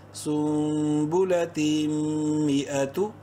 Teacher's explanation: تنوین کے بعد میم ہے اور میم مشدد ہے، غنہ ہوگا یہاں پر بھی